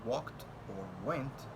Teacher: Wo, which is a voiced velar approximant sound, as in walked or went.